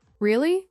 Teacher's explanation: when you ask a question like really, your voice goes up slightly at the end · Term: Intonation